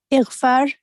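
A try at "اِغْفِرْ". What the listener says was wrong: Ighfir is correct. Ighfir, the fa should be al-kasra.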